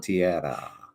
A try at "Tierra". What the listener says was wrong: No, a rolled R.